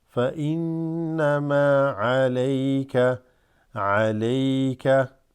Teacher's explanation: This noon has a shadda, also has ghunna, right, where you like do the nasal vibration.